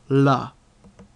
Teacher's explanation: The tongue is actually kind of licking the top row of teeth, and that's necessary for creating an l type sound. To try and create an L type sound without using your tongue is nigh impossible.